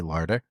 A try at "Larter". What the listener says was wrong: You did. You said Larda.